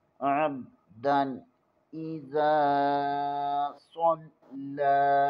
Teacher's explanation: صاد کو پر پڑھیں گے اور صاد میں سیٹی کی آواز آنی چاہیے، یہ حروف صفیریہ میں سے ہے.